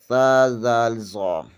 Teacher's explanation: زبان کی نوک ثنائے علیہ کے سرے سے لگے تو ثا ذال ظا ادا ہوتے ہیں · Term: حروف لثویہ